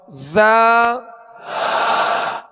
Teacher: زا میں سختی سیٹی کی آواز پیدا ہوگی